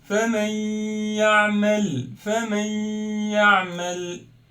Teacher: Instead of faman ya'mal, this noon will be hidden, and now it will be famay ya'mal, combining them. Hide the noon, it's erase this noon, combine the words, do gunna for 2 beats. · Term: idgham with gunna